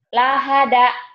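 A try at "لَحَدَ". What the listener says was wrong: Lah bukan lahada ya. Lahada itu ada pendobel kalau itu ya. Tidak ada pendobel. Lahada.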